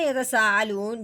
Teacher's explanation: مد کے فوراً بعد حمزہ اسی کلمہ میں آنے کی وجہ سے اس مد کا نام ہو گیا مد متصل